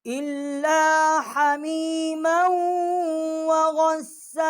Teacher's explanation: غین کو سین کے ساتھ ہم نے مشدد کیا ہے اور قاف جو ہے یہ بڑی قاف ہے، وسط حلق جو ہے جب زبان اوپر کے تالو سے ٹکر کھائے گی تو یہ بڑی قاف ہے، اس کا مخرج ہے